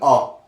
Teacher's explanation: इस ओ का उच्चारण आ और ओ के मध्य होता है, ठीक है, के बीच होता है, ठीक है। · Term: आगत स्वर